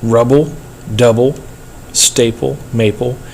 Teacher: that last syllable it has no no stress there so it's feminine